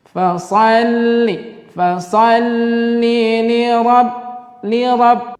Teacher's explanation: Karena di situ ada lam tasydid, maka di situ ada penekanan. Coba kita tekan satu atau dua ketukan.